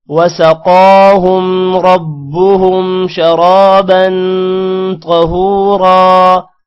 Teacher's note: قاف موٹا ہوگا، قاف پر کھڑی زبر ہے تھوڑا سا لمبا بھی کریں گے